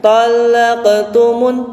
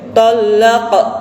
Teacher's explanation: di dalam mematikan qaf itu tidak ada penekanan yang dalam, gitu, ya. Tapi hanya selewat saja. Talaqtumun, tidak boleh talaq. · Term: qalqalah sughra